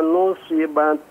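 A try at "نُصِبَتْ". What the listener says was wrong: Shadnya diperjelas pada dat.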